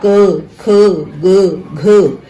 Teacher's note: इसका उच्चारण स्थान कंठ है